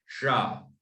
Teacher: हाँ देखो, शा, ये शा बोलते हैं जब शक्कर वाला शा, तो यहाँ पर दांत से थोड़ा ऊपर जो तालु कहलाता है, वहां जाके हल्की सी जीभ टकराती है और हवा ज्यादा निकलती है इसमें, शा, है ना। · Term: तालब्ध सकार